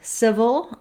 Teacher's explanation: in civil i'm long on this first syllable